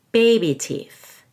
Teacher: it needs to be a long e baby teeth we're stressing baby more than teeth because it's a compound noun